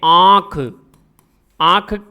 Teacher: चंद्र बिंदु का प्रयोग, अनुनासिक कौन से होंगे, नाक और मुख दोनों से बाहर निकले। जैसे आंख, आंख में आ स्वर के ऊपर चंद्र बिंदु लगाते ही स्वर नाक से भी बाहर निकलने लगा और मुंह से भी निकल रहा है